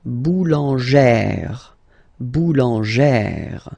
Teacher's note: you pronounce it like E, really open E sound